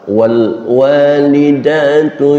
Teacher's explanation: suara Qalqalah sehingga terdengar bacaan W wale jangan pakai Le karena lam bukan huruf Qalqalah bacalah tanpa pantulan Qalqalah